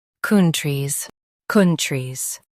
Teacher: Stress kun and soften trees.